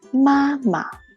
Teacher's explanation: The second syllable we say it soft and light, then we call it a neutral tone